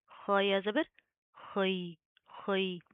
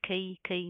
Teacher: خو کو آپ نے کھے نہیں بنانا